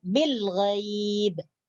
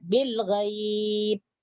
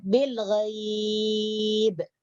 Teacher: Jadi boleh dipanjangkan 2 atau 4 atau 6 harkat. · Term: mad lin